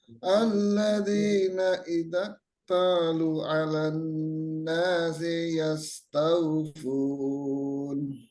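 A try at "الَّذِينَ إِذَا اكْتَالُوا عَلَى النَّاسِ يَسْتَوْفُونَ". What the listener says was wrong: Kaf sukunnya masih belum keluar sifat harusnya. Idzak talu.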